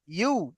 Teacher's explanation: ইয়া পেশ উ হবে না, ইয়া পেশ ইউ